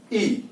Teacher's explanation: जब आप ई को बोलते हैं तो निश्चित रूप से उसमें जो जीभ है वह जीभ आगे की ओर स्पर्श होती है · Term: अग्र स्वर